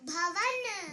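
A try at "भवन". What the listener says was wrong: No, it's not ba. Bha. Bhavan. Second ba, right? Bhavan.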